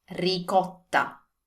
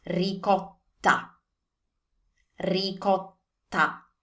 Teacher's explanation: double T. So you want to put a little bit more emphasis on this T.